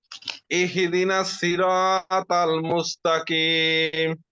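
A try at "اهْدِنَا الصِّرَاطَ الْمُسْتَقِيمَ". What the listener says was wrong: ওকে, আপনার তিনটা ভুল হয়েছে। আপনি এখানে তাসদীদ দিয়ে ফেলেছেন, ইহদিনাস এভাবে বলে ফেলেছেন। ইহি এরকম হয়ে গেছে, তাসদীদ হয়ে গেছে হাতে।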